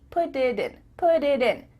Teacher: instead of spending the time to let the air come out of your mouth, your tongue is just tapping the top of your mouth to make a D